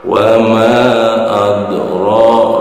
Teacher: Juga karena ro ini berbaris fathah, hukum bacanya juga itu tafhim, tebal, ya.